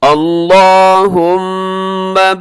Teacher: اس کو اپنے موٹا بھی پڑھنا ہے لام کو اور لمبا بھی کرنا ہے